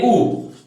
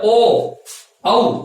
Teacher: अब ओष्ठ की आकृति जब ओष्ठ गोल हो जाते हैं तब उसको कहते हैं वर्तुल या वृत्तमुखी। ऐसे स्वर जिनके उच्चारण में हमारे होठ गोल हो जाते हो उसको गोल, वर्तुल या वृत्तमुखी स्वर कहते हैं।